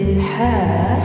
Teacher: হায়ের মাখরাজ মধ্য কণ্ঠনালী একটু চাপিয়ে বলবে হা